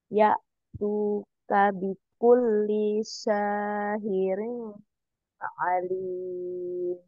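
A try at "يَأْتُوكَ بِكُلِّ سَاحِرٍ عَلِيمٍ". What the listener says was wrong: Sahih ya, huruf H-nya diperjelas. Ya tuka bikulli sahirin alim.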